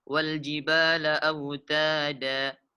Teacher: Autada pada kalimat autada di akhirnya kita dapati fathatain dan setelahnya ada alif. Ketika dibaca waqaf maka wal jibala autada dipanjangkan 2 harkat. Dan tidak dibaca autadan. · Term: mad iwad